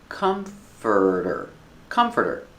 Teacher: The stress is on the first syllable. It's three syllables.